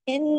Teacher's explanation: देर तक आवाज नाक में छुपेगी। इन पूरा हक अदा होगा। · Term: अकमल